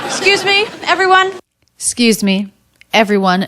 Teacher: notice the word is not excuse but it's skews she turns it into one syllable this is pretty common so the letter x here represents two